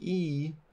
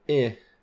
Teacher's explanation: a tense vowel like E, so we have plus tense here, compared with the vowel I, which is minus tense.